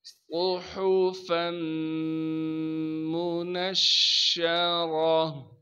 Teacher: صاد کو موٹا کر کے پڑھیں گے کیونکہ صاد موٹے حروف میں سے ہے، صاد میں سیٹی بھی ادا کریں گے. ہا کو صاف کر کے گلے سے نکالنا ہے.